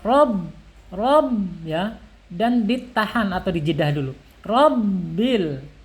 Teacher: huruf yang bertasdid ini harus jelas. Bagaimana caranya? Yaitu harus dihentak, ada hentakan ke huruf ba. Rob ya, dan ditahan atau dijedah dulu.